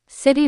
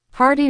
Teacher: When a T is between two vowels, it becomes a soft D. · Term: flapped T